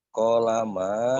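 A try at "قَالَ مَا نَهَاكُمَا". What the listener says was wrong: Koknya panjang, koknya panjang.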